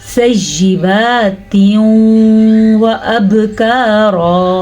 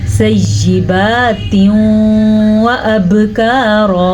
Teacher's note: میں نے غنہ بھی کیا ہے اور میں نے ملایا بھی ہے آپس میں. ٹھیک ہے, اور با پہ قلقلہ کرنا ہے.